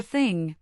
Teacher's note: For thing, the back of your tongue is raised for the NG.